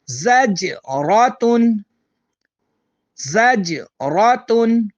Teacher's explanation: زجراتن میں جیم کا تعلق حروف قلقلہ سے ہے، اس پر ہم قلقلہ کریں گے